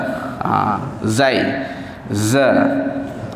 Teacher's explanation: Bunyikan desiran saja dengan suara yang kuat, dia akan jadi huruf za.